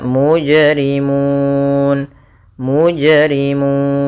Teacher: Mun boleh kita panjangkan dua harakat boleh empat harakat